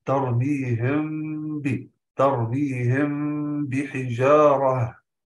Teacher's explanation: ملامسه للشفتين مع اثبات الغنه بمقدار حركه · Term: اخفاء الشفوي